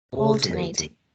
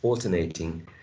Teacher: the primary stress falls onto the first syllable.